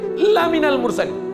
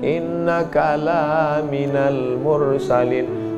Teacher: Lam itu kalau dibaca pendek, sungguh engkau adalah seorang rasul. Tapi orang sekarang asal lam panjang.